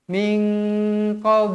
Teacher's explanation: Nun kosong bertemu dengan huruf q hukumnya ikhfa Hakiki wajib dibaca dengung dua harakat